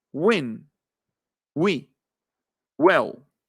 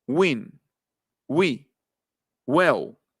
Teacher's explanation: la W en inglés es juntar al mismo tiempo los labios como una B y juntar al mismo tiempo el velo del paladar con la raíz de la lengua y hacer como una G.